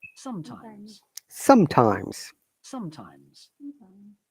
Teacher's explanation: in sometimes the S at the beginning is sa sound, at the end is za sound